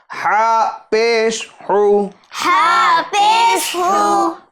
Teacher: ہا یہ بڑی ہا ہے جو درمیان حلق سے ادا ہوگی